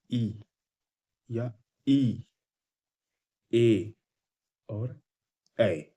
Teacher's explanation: अग्र स्वर का मतलब है कि ऐसे स्वर जिनका उच्चारण जीभ के अग्रभाग से होता है